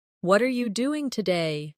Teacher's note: the stress usually falls on what and doing